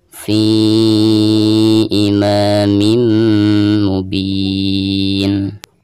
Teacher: Dan ketika kita mewakafkan pada ayat ini, maka di sini dihukumi mad arid disukun, bisa 2 harokat, bisa 4 harokat, dan bisa 6 harokat